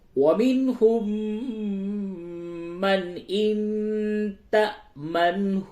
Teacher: منہم نون ساکن کے بعد ہا ہے، اس جگہ پہ اظہار ہوگا